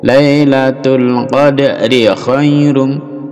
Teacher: Khairun menjadi khairum. Diganti mim mendengung dan dipanjangkan dengungnya. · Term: idgham bi gunnah